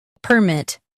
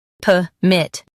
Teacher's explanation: In US, stress per. In UK, stress p. Keep MIT strong.